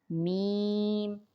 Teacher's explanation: میم دونوں ہونٹوں کے خشک حصے سے میم ادا ہوتا ہے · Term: حروف شفویہ